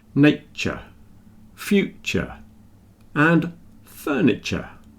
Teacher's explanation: when we're speaking quickly the T and the Y blend together and you get a little CH